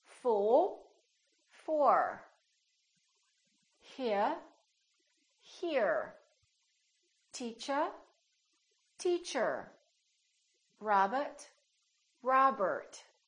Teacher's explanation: In British English, people generally don't pronounce the final R, the R at the end of the word. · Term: British R